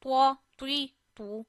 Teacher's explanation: We touch our tip of the tongue to the roots of upper two front teeth. But we read ta always in a thick voice.